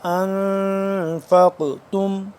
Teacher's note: نون زبر ان اخفا کریں گے, نون ساکن ہے. فق تم ان فا قاف زبر فق قاف موٹا اور قاف کے اوپر قلقلہ کریں گے کیونکہ قاف حروف قلقلہ میں سے حرف ہے ایک, تو جب ساکن ہو جائے تو اس کو قلقلہ کرتے ہیں.